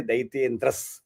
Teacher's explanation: So it is actually Daityendraha, and so we can say Daityendras, because Daityendraha and Tat will become Daityendras